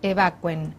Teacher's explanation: El verbo evacuar no hace tilde, por lo tanto no hace hiato, por lo tanto no debe llevar una tilde en la U que separa en sílabas las dos vocales, evacúen. Es diptongo, se dice evacuen, a pesar de que estamos tan acostumbrados a escuchar la otra forma.